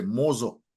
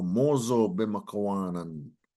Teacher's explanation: little O. You add a little O sound in between to connect them. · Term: connector sounds